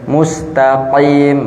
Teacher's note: QF yang tebal dan tidak berlebihan